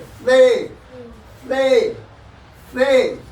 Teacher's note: जीभ को हल्का सा निकाल करके दांत पर रखेंगे और ऊपर के दांत से दबा के जीभ को कहेंगे से से से। उसके बाद इनको थोड़ा खींच के पढ़ते हैं।